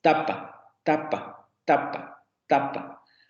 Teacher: se van a dar cuenta que nuestro fonema está articulado en los dientes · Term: dentales